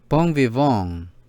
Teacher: The NG, a muted nasal sound similar to the NG in sing.